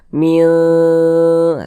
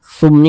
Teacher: itu disamarkan Min seperti itu Min kemudian di dengungkan atau digunahkan jadi suaranya itu kita tahan kita panjangkan sejenak